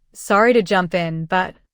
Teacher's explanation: the tone should be calm and the intonation rising at the end of jump in to sound friendly, not rude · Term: rising intonation